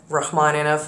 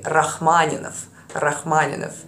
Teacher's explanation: For example, it's not Rachmaninov in Russian, you would roll your R's. So it would be Rachmaninov.